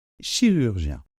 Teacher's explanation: on a ce son G qui ressemble un peu au ch, hein, de chocolat, mais qui laisse davantage passer l'air. Donc, chirurgien, attention, on a un I suivi de la nasale 1.